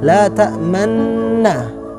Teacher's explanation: Yang seharusnya diharokatnya fathah, tapi bibir kita pada saat mengucapkannya itu seakan-akan mengucapkan dhamma. Tapi tetap harus di garis bawahi, huruf yang kita ucapkan tetap la ta'manna, tapi bibir kita aja yang bisa dibilang monyong gitu. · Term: al-ismam